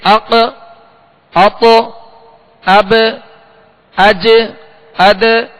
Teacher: یہ جو آواز لوٹتی ہوئی آواز آ رہی ہے اسے کہتے ہیں قلقلہ. اس بات کو ذہن میں رکھیے گا، بقیہ کسی حرف میں قلقلہ نہیں ہوگا.